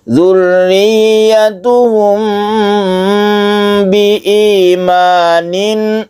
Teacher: Nah, ini kita tahan di sini mem berarti bertemu dengan ba karena disebut ikhfa syafawi. Ini ditahan dan dipanjangkan sedikit.